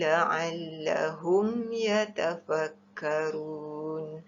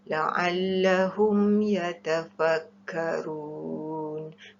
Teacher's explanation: Mim mati bertemu ya, hukumnya izhar syafawi, mesti dijelaskan bacaannya.